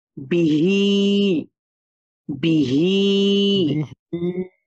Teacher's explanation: হার নিচে খারা জের তাহলে তো আমাকে এখানে এক আলিফ টেনেই পড়তে হবে